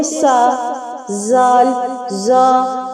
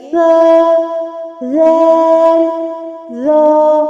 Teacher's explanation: اس میں سیٹی نہیں ہوتی، زبان کی نوک باہر نکال کے ادا کریں گے۔ سا، زال، زا، ایسے نرمی سے۔